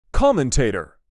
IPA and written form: ˈkɒmənteɪtə (COMMENTATOR)